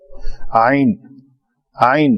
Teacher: واو پہلے کلمہ ہے واو، تو اس کے لیے شفتین گول ہوں گے۔ و علم، عین جو ہے وہ وسط حلق سے ادا ہوتی ہے